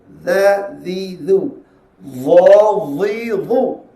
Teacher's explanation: keluar daripada hujung lidah menekan pada hujung gigi kapak atau gigi kacip sebelah atas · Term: huruf za